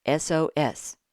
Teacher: the first sound in SOS is a vowel sound. It sounds like a short E.